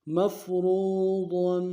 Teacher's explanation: را کو موٹا ادا کریں گے، ضاد کو تنوین غنہ کریں گے